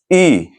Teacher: जब बोलेंगे ई तो हमारा जो जिह्वा है उसके अगले हिस्से से बोला जा रहा है। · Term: अग्र स्वर